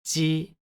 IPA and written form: ʑi (じぢ)